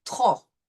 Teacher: We will not pronounce the P, but we will say trop.